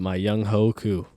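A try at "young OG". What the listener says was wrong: It's pronounced Young Way. it's not how it's. That's not how it's pronounced. But as sports media analysts right now, we cannot call this man Young Ho.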